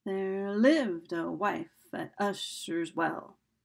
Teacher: starts out with an unstressed syllable stressed unstressed stress unstressed stress